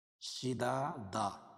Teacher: دو زبر کی تنوین پر وقف کرتے ہیں، ایک زبر کے قائم مقام الف لائیں گے